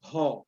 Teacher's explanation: you tend to use your two lips, and there's an explosion for bho.